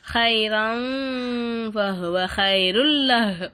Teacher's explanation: இந்த இடத்துல ஹைரன் அப்படின்னு சொல்லாம ஹைரம் அப்படின்னு சொல்லிட்டு குன்னா செய்யணும்